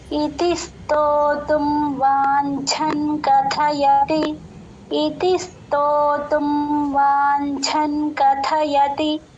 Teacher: ఇతిస్తో అని ఆ సోని కలుపుతూ చెప్పాలండి సంయుక్తాక్షరం కాబట్టి ఇతిస్తో అని స్ట్రెస్ ఇస్తూ చెప్తాము